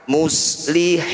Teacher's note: Mad tabi'i jika bertemu dengan huruf hidup kemudian diberhentikan jadi bacaan mad alif disukun. Hi kita tambah panjangnya jadi 6 harokat atau 6 ketukan, kemudian huruf terakhir disukun. Muslihina ketika diberhentikan muslihin.